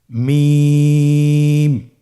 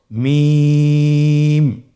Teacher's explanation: 2 ঠোঁট চেপে ধরে আমরা উচ্চারণ করব